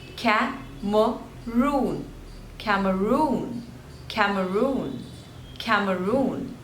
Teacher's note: there are three syllables and the stress is on the third one